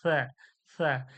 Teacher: জিভের আগায় এবং সামনে উপরের দাঁতের আগায় দাঁতটা লাগবে, দাঁতের আগাটা জিহ্বার আগাটা লাগবে, আর সামনে হাওয়াটা বের হয়ে যাবে, সা, সা। এটা সির সির করে সিন, সিন শিরশির ও পাতলা আওয়াজ, সিন, সিন, সিন।